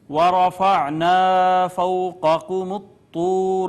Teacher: پھر یہاں پہ دیکھیں را مفتوح ہے، لہٰذا اس کو پر کر کے پڑھیں گے